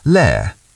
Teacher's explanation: In formal situations like interviews or university, the T might be clearer, but in casual chat with colleagues, the glottal stop is very natural